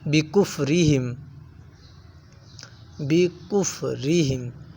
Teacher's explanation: بل لعنہم اللہ بکفرہم، بکفرہم را کو باریک پڑھیں گے کیونکہ را کے نیچے زیر ہے، اور اس کے بارے میں میں نے بتایا کہ جب را کے اوپر زبر یا پیش آ جائے تو را کو پر پڑھا جاتا ہے، موٹا پڑھا جاتا ہے، اگر زیر آ جائے تو را کو باریک پڑھا جاتا ہے